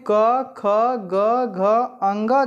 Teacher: अब यहाँ पे देखेंगे क वर्ग, जो क वर्ग होता है जिसमें क, ख, ग, घ, अंग जो आते हैं, इनका उच्चारण स्थान जो होता है वह कंठ होता है। यानी जब आप क, ख, ग, घ, अंग इसका उच्चारण करेंगे तो उसका जो उच्चारण स्थान होता है वह कंठ होता है।